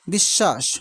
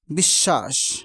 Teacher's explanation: হয়েছে বিশ্ব তার মানে তালব্য সদ দুইবার উচ্চারিত হচ্ছে এভাবে বিশ্বাস বফলা উচ্চারণ নেই কিন্তু পূর্ববর্ণ দুইবার উচ্চারিত হচ্ছে